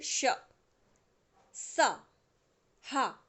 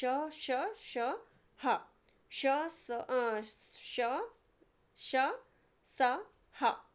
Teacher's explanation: वायु मुख से रगड़ खाकर ऊष्मा पैदा करती है, यानी उच्चारण के समय मुख से गर्म हवा निकलती है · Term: ऊष्म व्यंजन